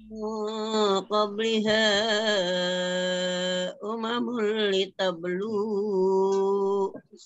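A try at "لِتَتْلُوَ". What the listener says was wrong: Mana ada litablu wajah. Litat buah. Iya, tapi bukan litablu, tapi litat lu.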